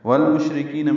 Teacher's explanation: شین ساکن ہے، اس میں ہمس ہے، تفشی ہے، آواز منہ میں پھیلتی ہے، سانس جاری رہتی ہے